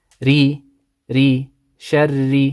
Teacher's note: When the Ra has a kasra, you need to pronounce it light.